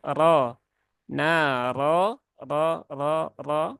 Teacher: bukan dengan menggelembungkan pipi bukan dengan memonyongkan bibir tetapi dengan mengangkat pangkal lidah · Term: huruf-huruf yang tebal